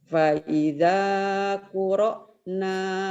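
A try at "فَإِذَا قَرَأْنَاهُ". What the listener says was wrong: Koro bukan kuro ya. Faida faida faida qara faida qara faida qara dahu fattabi' Qur'anah.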